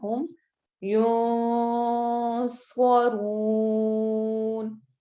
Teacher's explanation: नून को हमने छुपा के लंबा करना है, गुन्ना करना है